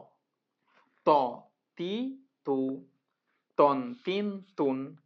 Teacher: ত জিহ্বার আগা থেকে মোটাভাবে আদায় হবে। ত এভাবে যখন বলবো আমরা ত, তো জিহ্বাটা আহ, আমাদের ঠোঁটগুলো একসাথে হয়ে আহ, ছেড়ে যাবে।